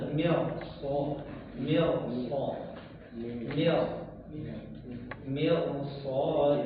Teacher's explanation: huruf ra sukun setelahnya huruf istilla yang berharakat fathah maka dibaca tebal